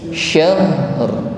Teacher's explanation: Mengucapkan huruf shin jangan lupa disertai dengan sifat tafashi, meluasnya udara di dalam mulut kita. Jadi desisnya lebih tebal. Syahr. Jadi sebelum kita mengeluarkan sifat ra, takrir dan tafkhim, sebelumnya kita sempurnakan dulu sifat huruf ha.